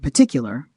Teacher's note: the word particular would be pronounced with a syllabic R in careful American speech